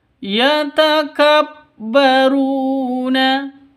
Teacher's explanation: ru panjang dua ketukan karena ada di sini ada wau mati diawali dengan Dom domah